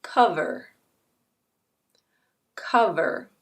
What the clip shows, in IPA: ˈkʌv.ər